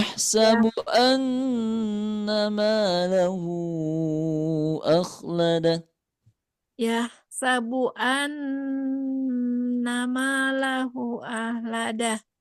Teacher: guna musyadadahnya ditahan dulu 4 ketukan